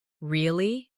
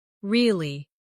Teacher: With a rising tone to show surprise. Now say, really? With a falling tone to show you don't believe someone.